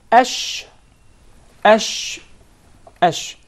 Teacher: the shin is articulated from the middle of the tongue and what lies opposite to it from the upper palate or the roof of the mouth ash ash ash the learner Sheen along with other two letters